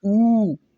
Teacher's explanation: ऊ जो है वो पश्च स्वर है। ऊ यानी कि पीछे से आवाज आती है, कंठ के अंदर से आवाज आती है